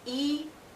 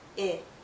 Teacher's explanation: And our mouth opens a bit more when we say I.